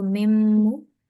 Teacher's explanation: And it's a ghunna. So nasal sound for 2 seconds. · Shadda means we need to stress on mim